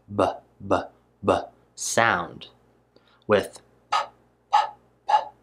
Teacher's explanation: i use my voice box if i hold my throat here i can feel it vibrating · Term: voiced